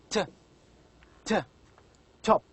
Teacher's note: When you pronounce t, you can feel that the front part of the tongue touches the area which is behind the upper front teeth, alveolar ridge. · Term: alveolars